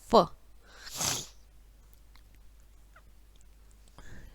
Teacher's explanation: दांत जीभ प्लस होठ, दांत जीभ प्लस होठ जब मिलते हैं तो व का उच्चारण होता है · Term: दंतोष्ठ